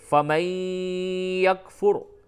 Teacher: قد تبین الرشد من الغی فمن یکفر بالطاغوت ویؤمن باللہ فقد استمسک، یہاں پہ فمن یکفر ادغام مع الغنہ ہوگا. فمن یکفر را کو پر کریں گے